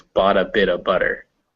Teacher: what happens is your tongue is just kind of tapping